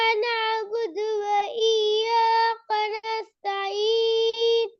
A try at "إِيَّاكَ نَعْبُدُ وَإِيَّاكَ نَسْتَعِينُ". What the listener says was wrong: நஸ்தஈன் போதாதே. இங்கதானே ராகம் எடுக்கணும். நஸ்தஈன் இங்கதான் முக்கியமான புள்ளி. நீங்க இதை விட்டுட்டீங்க.